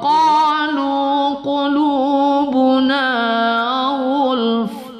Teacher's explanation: ghul jangan hilang fa-nya kalau kita wakaf di situ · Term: huruf hamas